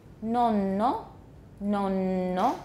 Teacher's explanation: that n is lengthened it's about twice as long as it would be if it were not a geminate that's called a geminid geminid i think we mentioned it before